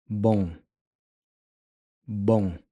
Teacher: The m here sounds closer to an ng, but it's almost like you don't quite finish pronouncing the g.